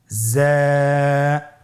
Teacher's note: হরফটি বারিক হরফ এজন্য পাতলা করে উচ্চারণ করতে হবে হরফটির মাখরাজ আপনারা দেখতে পাচ্ছেন জিহ্বার আগা সামনের নিচের দুই দাঁতের পেট ও আগার সঙ্গে লাগিয়ে উচ্চারিত হয়।